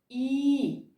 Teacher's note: вимовляється дуже легко цей звук голосний він дзвінкий і співочий